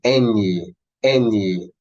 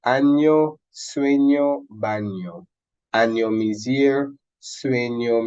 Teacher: just imagine that n and y were fused